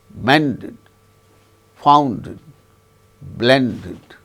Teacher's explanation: ends in either T or D, the past tense marker is pronounced as id